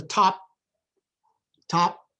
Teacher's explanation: The top of the desk, if that top is at the end of the sentence, let's look at the top. Top, I kept the P and I didn't release it. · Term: unrelease